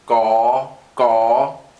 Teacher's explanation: So this is actually similar to an English G. It's unaspirated, just a g sound.